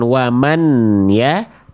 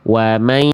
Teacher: Jadi harus dileburkan, bukan waman ya, tapi wamaya. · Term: idgham bi gunnah